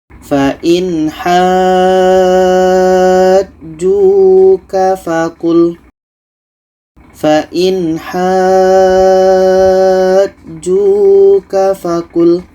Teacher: Kita panjangkan 6 harakat baru masuk ke huruf yang ada tasydid. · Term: mad lazim kilmi mutsaqqal